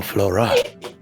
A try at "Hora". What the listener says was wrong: you're saying it wrong Flora no it's Hora Flora H FL Hora Flora